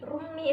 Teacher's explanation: Cara membacanya memasukkan huruf depan dengan berdengung. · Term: idhom bihuna